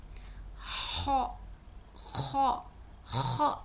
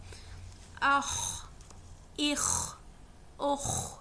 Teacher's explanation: یہ بھی top of throat سے ادا ہوتا ہے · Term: خوا